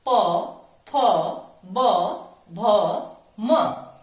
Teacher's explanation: हमारे होठ आपस में मिलते हैं, उन्हें ओष्ठ व्यंजन कहते हैं। जैसे प, अब मैंने प की आवाज निकाली तो मेरे दोनों होठ आपस में मिल गए हैं।